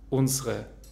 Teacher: Unsere wird zu unsere mit E schwa am Ende und wir sagen das erste E nicht, weil es in einer unbetonten Zwischensilbe ist